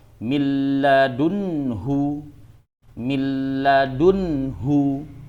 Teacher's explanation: cara membacanya idgham bila gunah adalah tidak dengung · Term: idgham bila ghunah